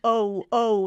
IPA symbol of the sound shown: oʊ